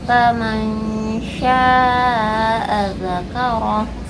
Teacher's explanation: Huruf yang dari tengah lidah itu ada 3, yaitu shin, ya, dan juga jim. Jadi ikhfa yang dari tengah lidah ini seperti ada y-nya, ya, bunyinya. Faman syaa, tidak terlalu dengung.